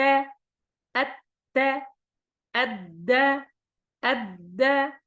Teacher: تخرج هذه الثلاثة من طرف اللسان مع أصول الثنايا العليا، يعني 3 أحرف من مخرج واحد.